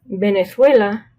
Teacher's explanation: So remember, just like when we talked about Benito, if you're talking about this B, like Venezuela, at the beginning of a phrase or word, it sounds like B with your lips together.